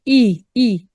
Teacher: ए नहीं कहना इ ए का साउंड अगर देंगे तो हम इसको गलत पढ़ रहे हैं